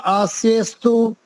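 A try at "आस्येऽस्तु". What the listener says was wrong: हाँ जी, यहाँ पर अस्तु अलग से नहीं बोलना है, आस्यस्तु, आस्यस्तु, ठीक है। यहाँ पर हमने आपको स्वर संधि में एक संधि सिखाई थी, पूर्व रूप संधि, उसका यहाँ पर प्रयोग हुआ है।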